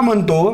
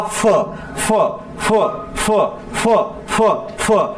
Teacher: प हा अल्पप्राण आहे तर त्याच्या समोर असलेला फ फ फ फ फ फ फ शेवटी ह येतोय. म्हणजे प अधिक ह मिसळून फ तयार झाला. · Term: महाप्राण